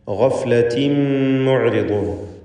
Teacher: തൻവീനിനെ മീമിലേക്ക് പൂർണ്ണമായും ലയിപ്പിച്ച് മണിച്ചുകൊണ്ട് ഉച്ചരിക്കുക. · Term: ഇദ്ഗാം ബിഗുന്ന കാമിൽ